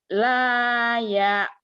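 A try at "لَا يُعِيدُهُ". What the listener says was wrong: Dunya pendek ya Bu.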